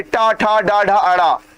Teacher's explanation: ट वर्ग कहां से बोला गया भैया ये मूर्धा से बोला जा रहा है